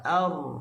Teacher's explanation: Kita sebut lam pun kita hujung tepi lidah letak di gusi dalam keadaan yang tak kuat. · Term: bainiyah atau mutawassut